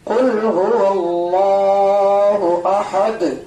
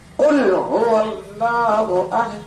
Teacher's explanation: دال چونکہ ساکن کیا گیا ہے وقف کرنے کی وجہ سے، تو دال میں کیا ہو گیا، قلقلہ